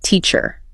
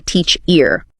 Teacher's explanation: You naturally hit teach harder. You don't say teach ear.